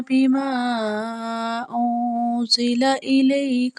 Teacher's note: بیما میں جو مد ہے 2 سے 3 الف لمبی پڑی جائے گی